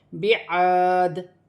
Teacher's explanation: یہاں پر 2 زیر کی تنوین ہے، وف کی صورت میں یہ 2 زیر کی تنوین گر جائے گی اور دال ساکن ہو جائے گی